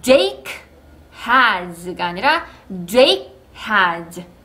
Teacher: Jake까지만 소리 낼 거예요. 이렇게 받침 처리. 언제 그러냐면 뒤따라오는 자음이 있을 경우에 그렇습니다.